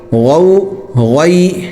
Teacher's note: غین بھی جو ہے موٹا ہوتا ہے اور حلق سے نکلتا ہے، اس کو گاف کی طرح گین نہیں پڑھنا بلکہ حلق سے غین۔